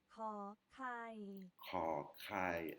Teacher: Là, on a la consonne krokrai qui est un K avec un H inspiré. Il faut bien faire racler la gorge.